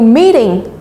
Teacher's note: Vậy chúng ta sẽ chỉ nhấn vào meet chứ chúng ta không nhấn vào cả hai meeting